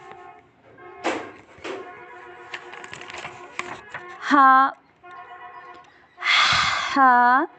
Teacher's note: ہا حلق کے درمیان سے نرمی سے ادا ہوتا ہے۔ ہا حلق کے درمیان سے نرمی سے ادا ہوتا ہے، یہ حروف حلقیہ میں سے ہے، یہ حلق کے درمیان سے ادا ہوتا ہے، یعنی گلے کے درمیان سے ادا ہوتا ہے۔